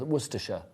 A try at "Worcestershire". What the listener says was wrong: It's 3 syllables. You put in an extra syllable.